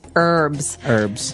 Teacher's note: in American English it's more commonly pronounced as a silent H. That's right, herbs.